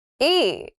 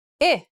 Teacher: Learners tend to think the difference between these two sounds is about how long the vowel sound is, but really it's about the quality of the vowel sound. E is more tensed, and I is more relaxed. When you say the vowel E, like in beat, your tongue is high up and towards the front of your mouth, and your lips are stretched out more.